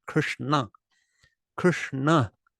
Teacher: it's in the r category where you curl your tongue up curl your tongue up point it at the roof of your mouth touch with your mouth and make a sound in your nose · the whole word has the tongue folded up on the roof of the mouth Krishna so it's just easy to already make that na instead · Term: n with a DOT under it